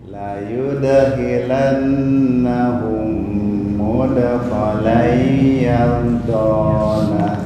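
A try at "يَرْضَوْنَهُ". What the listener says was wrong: Bukan yardona tapi yardawna. Yardawna.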